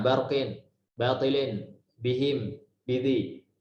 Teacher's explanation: Huruf ba ini harus dibaca tarqiq ya, tipis.